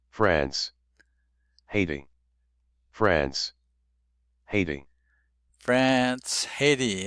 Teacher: Haiti is two syllables. The stressed syllable is the first syllable